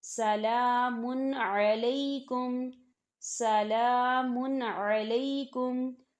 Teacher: عین ہے، یہ حروف ہلکی کا ورڈ ہے، تو یہاں پر غنہ جو ہے نہیں ہوگا، صرف ہم تنوین کی آواز کو ظاہر کریں گے